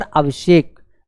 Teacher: दंत सा को हम लोग मूर्धन्य में परिवर्तन करेंगे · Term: मूर्धन्य सा